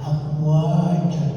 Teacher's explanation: Wa ada alif mad tabi'i, panjangnya 2 harakat ya.